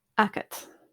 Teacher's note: But it's A-G-A-D. So both the G and the D have become unvoiced because they're not in the first, they're not the first sound in the word.